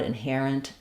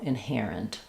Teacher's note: You're going to have a little tiny or I sound there. It's a reduced vowel in this last syllable. So the IPA for inherent would be inherent. · I think we say it in this case more like an I sound, inherent, or almost like no vowel there at all, inherent.